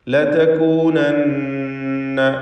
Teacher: ഷദ്ദുള്ള നൂനിനെ മണിക്കുക. നൂൻ മുഷദ്ദദ.